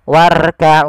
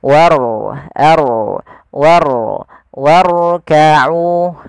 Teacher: sini ada huruf ro yang ditandai dengan warna biru tebal menakan huruf rnya dibaca dengan ro tafkim yaitu ro yang tebal